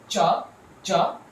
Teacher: there is this slow release of the air african sounds are like cha cha if you try to produce